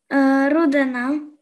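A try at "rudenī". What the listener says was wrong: Руденя, да? В латышском языке обычно произносят мягко, да?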